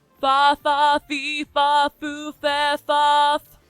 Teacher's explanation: in Japan, the F, the fu note is not so fu, it's more like hu. It's kind of a between an F.